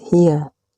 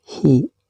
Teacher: Kalimat hiya, bila dihentikan membacanya maka harus dibaca hi panjang juga sekitar 1 alif atau 2 harkat seperti panjangnya bacaan mad tabi'i.